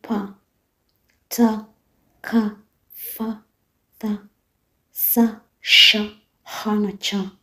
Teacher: Ni sauti zisizotikisa nyusi za sauti zinapotamkwa. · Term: Sauti si guna